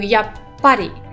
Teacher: you have a small tsu that doubles the sound after it, but also ha turns into pa